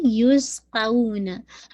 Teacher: سین پہ آپ کا ہمس بھی ہے، وسلنگ ساؤنڈ بھی ہے